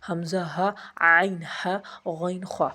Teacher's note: حروف حلقی وہ حروف جو حلق سے ادا ہوتے ہیں